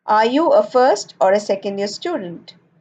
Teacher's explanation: An alternative question is spoken with a rising intonation in the first part and a falling intonation in the second part.